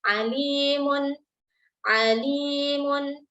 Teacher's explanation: Di sini ada lam kasrah yang berjumpa dengan ya sukun. Nah, di sini lam kasrah ini kita baca sepanjang 2 harokat. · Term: mad tabi'i